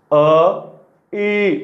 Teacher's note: अ म्हटल्यानंतर इ म्हणत आहे जिभेच्या कडा उचलल्या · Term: तालव्य